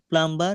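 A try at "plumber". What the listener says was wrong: প্লাম্বার আমরা বলি, কিন্তু এটা ভুল উচ্চারণ, এটা প্লামার, বিটা উচ্চারণে আসবে না।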